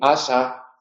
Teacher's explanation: cuando la S aparece entre vocales, se pronuncia sonora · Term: alófono sonoro